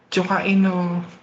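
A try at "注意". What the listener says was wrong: hindi po kae ang basa doon. Onegaishimasu. Try to read it carefully.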